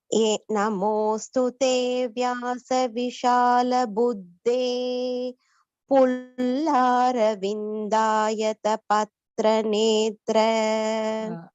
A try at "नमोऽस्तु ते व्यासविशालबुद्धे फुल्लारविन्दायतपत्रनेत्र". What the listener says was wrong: Vishala Buddhe. Mahapranas you have to stress and say, and Fullara, Pha Mahaprana should be stressed.